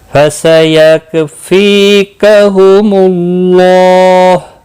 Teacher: فی یا مدہ ہے، ایک الف کے برابر کھینچ کر پڑھیں گے۔ اللہ کا لام پیش کی وجہ سے پر پڑھا جائے گا، اور اس کے اوپر کھڑی زبر بھی ہے، ایک الف کے برابر کھینچ کر پڑھیں گے۔